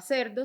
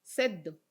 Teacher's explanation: hay casos donde se duplica el fonema posterior y no se realiza la líquida, como en el ejemplo del inicio, donde no se realizaba cerdo, sino seddo. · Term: geminación